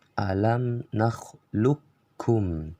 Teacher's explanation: Ini salah total karena alam nakhluqkum masuk ke golongan idgham kamil, yaitu memasukkan huruf qaf ke huruf kaf secara sempurna baik makhraj maupun sifat, sehingga kalau dibaca qafnya itu seakan-akan tidak ada